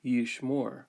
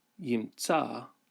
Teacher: And we can see that in the case of the imperfect verb yimtza, the difference is that the holum, which we would expect, we don't find that. Rather, because the aleph's nature is to quiesce, then the vowel has changed to a comets, and the aleph has lost its consonantal character